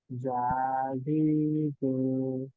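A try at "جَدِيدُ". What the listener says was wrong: যাটা যখন আপনি দাল প্রথমটা উচ্চারণ করছেন তখন আপনার জিভ ভেতরেই থাকছে, জিমের মতো শোনাচ্ছে। এটা কি বুঝতে পারেন যে জি একটু শক্ত হয়ে যাচ্ছে? হ্যাঁ, আপনি জিভটাকে একটু বের করেন।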